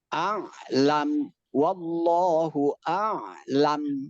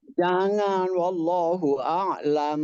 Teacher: Kalau nun dan mim dibaca wakof, maka tidak boleh ada dengung.